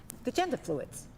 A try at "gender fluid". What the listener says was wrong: You probably shouldn't put so much emphasis on the fluids part.